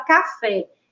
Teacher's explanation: sério olha em sua palavra café ela tem duas sílabas e a sílaba tônica é a última a sílaba fé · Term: oxítona